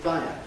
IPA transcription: ˋfaɪə